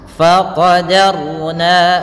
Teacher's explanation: Fa alirkan nafasnya, faqadarna yang kita naikkan adalah lidahnya, bukan bibirnya, jangan enggak, tapi dia bukan nanti itu terlalu tebal, nah, terlalu agak berat. Faqadarna, rohnya di sini roh tafkhim harus tebal, jangan faqadarna, jangan kita baca dengan roh tipis